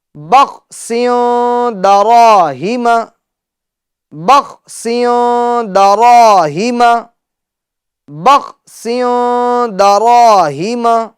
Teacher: غنہ کریں گے، یعنی ناک میں آواز لے جائیں گے۔ را کو ہم پور پڑھیں گے کیونکہ را پر زبر ہے اور الف مدہ بھی ہوگا